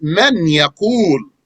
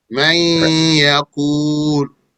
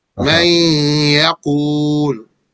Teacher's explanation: And this ya is not completely enveloping the noon. The noon retains some of its own identity, which is in the appearance of the ghunna. That ghunna is evidence for the noon.